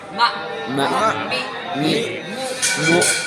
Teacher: میم حرف برری ہے یعنی ہونٹوں کو خشکی والا حصہ باہر والا حصہ وہ ملتا ہے کہ میم ادا ہوتی ہے